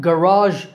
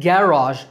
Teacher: garage in American English, stress on second syllable, and garage in British English, stress on first syllable